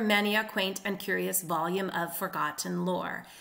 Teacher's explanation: First of all, many a is a slur or a tie.